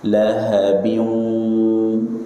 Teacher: Kali ini harus dengan rongga hidung karena idgham bi gunnah.